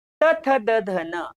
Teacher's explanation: जिभेचा शेंडा पुढच्या दातांना लागतो आणि म्हणून याला म्हणायचं दंत्य